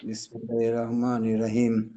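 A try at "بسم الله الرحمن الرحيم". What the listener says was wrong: আচ্ছা, আপনি রাহমানির রাহিম হয়ে যায় কিন্তু অনেক সময়, রা তো হওয়ার সুযোগ নেই, র, রহমানির রহিম।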